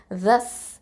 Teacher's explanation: இது தரஃபுல் லிசான். அப்போது நுனினாக்கு மேல் முன்பற்கள் கீழே வச்சு சொல்லணும்.